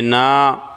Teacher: نا الف سے پہلے زبر الف مدہ ہوگا، ایک الف کے برابر کھینچ کر پڑھیں گے